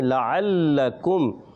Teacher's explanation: لام مشدد ہے، پہلا لام متحرک ہے اور دوسرا بھی متحرک ہے مگر دوسرا مشدد ہے، دوسرا تھوڑا رک کر ادا کریں گے، لعلکم۔ اور یہاں پر بھی میم ساکن کے قاعدوں میں سے قاعدہ اظہار شفوی، را ساکن سے پہلے آ گیا ہے پیش تو را کو پڑھیں گے اور ہا کی ادائیگی کلیئر کرنی ہے، آخر میں ہوگا حد عارض۔